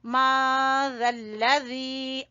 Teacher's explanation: यहाँ इख्फा हो रहा है, नून साकिन के बाद जाल , तो इसलिए यहाँ पे इख्फा का कायदा लग रहा है।